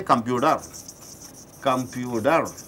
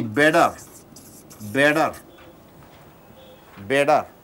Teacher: So, T is followed and preceded by a vowel. T is converted to D, computer. You say computer.